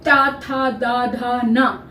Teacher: इसी तरह से ता वर्ग जो है दांतों के पीछे, जीभ जो है वो दांतों को छू कर आती है, दांतों के पीछे वाले भाग को छूती है, ऊपर वाले दांत।